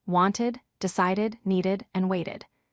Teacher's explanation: If a verb ends with the sounds t or d, we add an extra syllable and pronounce the ed d as id. This makes the word easier to say. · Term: id sound